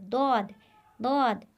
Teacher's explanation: ये हरूफ शजरिया के। ज़बान का दरमियानी किनारा जब ऊपर की दाढ़ों से लगे तो दौद अदा होता है, दौद, दौद। हर्फ दौद, ये हर्फ हाफिया कहलाता है।